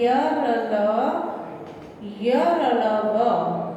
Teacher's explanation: जिन व्यंजनों का उच्चारण करते समय जीभ मुख के तालुओं का स्पर्श नहीं करती, उन्हें अंतःस्थ व्यंजन कहते हैं।